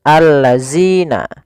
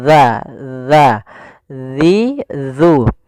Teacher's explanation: Makhraj huruf zal itu dari ujung lidah kita, ujung lidah menempel dengan gigi dari atas kita.